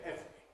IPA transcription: ˈevri